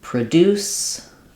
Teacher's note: sometimes find the noun is stressed on the first syllable and the verb is stressed on the second syllable